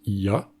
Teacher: entre i et a, on a à la base ya, et donc le ye s'impose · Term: consonne prothétique